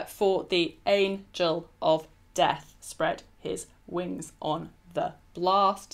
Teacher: there are three syllables in each metrical foot because it's in anapests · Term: anapestic tetrameter